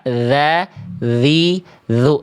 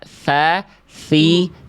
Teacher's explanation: Tapi yang beda dzal enggak pakai udara. Dza dziu. Tsa pakai udara.